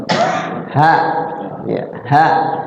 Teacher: Kalau kita baca hak itu terasa di dada emang, tapi sebenarnya bukan di dada adanya, di tenggorokan paling bawah.